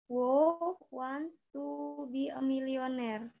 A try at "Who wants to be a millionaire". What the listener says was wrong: Oke, nanti diperbaiki gini ya. Who, bukan wo ya. Who wants to be a millionaire? Who wants to be a millionaire?